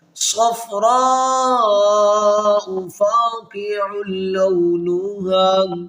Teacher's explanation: یہاں پر 5 حرفی مد ہے اس حمزہ کے اوپر، تو اس کو ہم 5 الف کی مقدار لمبا کریں گے